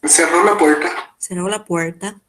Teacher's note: E a gente também observa uma característica do espanhol de Assunção, aqui no caso de Assunção, mas também em Cidade del Este, esse R retroflexo, né?